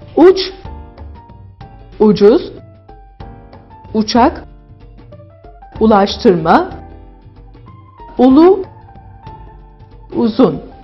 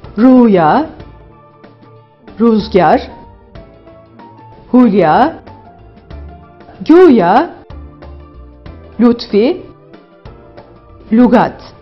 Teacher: İnce U'ya baktığımızda kalın U'ya oranla daha ileriden çıkan bir ses söz konusu.